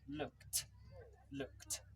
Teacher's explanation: So, although it's a d, it's actually the sound is a t.